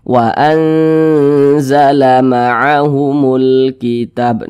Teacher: Jadi dia tidak condong ke huruf N, juga tidak condong ke huruf eng, tapi di tengah-tengah begitu. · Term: samar